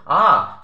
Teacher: যায় তাই এই তিনটে স্বরধ্বনি হলো পশ্চাৎ স্বরধ্বনি একমাত্র আ স্বরধ্বনিটি উচ্চারণের সময় আমাদের জীব সামনে বা পিছনে না গিয়ে একদম কেন্দ্রস্থলেই অবস্থান করে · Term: কেন্দ্রীয় স্বরধ্বনি